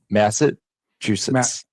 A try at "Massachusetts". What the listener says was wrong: You're like rolling the S's at the end together. It's weird.